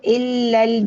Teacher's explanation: हम्म, हमजा, हमजा लाम जेर इल करके पढ़ेंगे और लाम के ऊपर शद है, और बाद में लाम के साथ जो अलिफ है ये मद्दा लेटर बनेगा, लेकिन हम इसको ड्रॉप करेंगे और हमजातुल वसल को भी ड्रॉप करेंगे · लाम जेर इल बनेगा और लाम को हम दूसरे लाम के साथ मिला देंगे